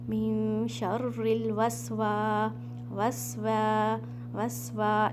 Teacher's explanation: अलिफ मद्दिया कहते हैं, तो ये अलिफ मद्दिया है, तो मीन्स यहाँ पर आपने वाव को हरकतैन मीन्स 2 सेकेंड स्ट्रेच करना है